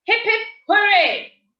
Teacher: which should create enthusiasm from the audience, we should end the statement on a higher note.